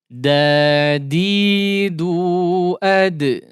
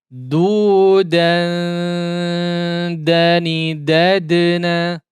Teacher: perhatikan di huruf dal yang disukunkan ya. Maka di situ ada qalqalah